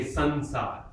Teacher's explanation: It's a sympathetic nasal. It takes the quality of the nasal sound that is of the letter that follows it. · Sa is also a dental, like ta. So it becomes a na before sa.